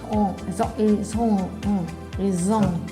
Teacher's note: Y como pueden notar, yo digo on al final. No pronuncio la T, ni pronuncio la N.